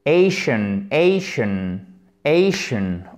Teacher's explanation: Donc là, on a vraiment un mini schwa et ensuite un N.